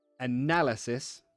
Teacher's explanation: Analysis, you put the stress on na.